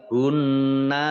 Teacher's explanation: nunnya dibaca double, dibaca gunnah mendengung, ya. Nunnya hunna ditahan 2 harokat.